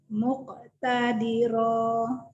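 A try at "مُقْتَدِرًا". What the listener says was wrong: Bagus, tapi qafnya nggak nyambung nih kol-kolahnya. Ayo lagi, satu kali lagi.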